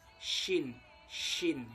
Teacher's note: tempat keluarnya itu adalah bagian tengah lidah dengan bagian tengah langit-langit atas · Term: huruf shin